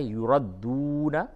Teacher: وَيَوْمَ الْقِيَامَةِ يُرَدُّونَ إِلَىٰ أَشَدِّ الْعَذَابِ. یہ واو مدہ ہے، یردون، تھوڑا سا کھینچیں گے